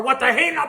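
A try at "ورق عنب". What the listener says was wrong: Warak, not what the. Warak. Warak. Einab. Einab. Almost.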